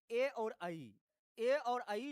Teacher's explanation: यानी कंठ और आपका जो तालु है, आप बोल करके देखो, ए बोलो तो आपको कंठ ए, और जीवा के जो आगे वाला तालु है तो उसका प्रभाव पड़ रहा है, आप चेक कर सकते हैं। तो कंठ और तालु से ए और ऐ का उच्चारण होता है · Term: कंठ तालव्य